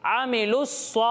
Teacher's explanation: हम साकिन हर्फ को नहीं पढ़ेंगे, यानी लाम को डायरेक्ट स्वाद के साथ मिलाकर पढ़ेंगे और वाव साकिन को नहीं पढ़ेंगे।